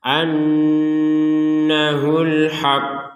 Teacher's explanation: karena di sini ada tasdid maka cara membacanya memang seperti itu ditekan dulu anul setelah ditekan baru mengucapkan pantulan dari huruf q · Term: Qalqalah Kubro